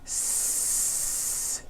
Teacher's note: The S consonant, made with air going through your front teeth.